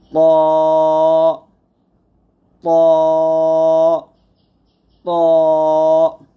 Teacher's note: তারপর হচ্ছে ত মোটা হবে, ত তোয়া বলবো না, অর্থাৎ ঠোঁট গোল করবো না, ত মোটা করে বলতে হবে, জিহ্বার আগা সামনের উপরে দুইটাতে গোড়ার সঙ্গে লাগিয়ে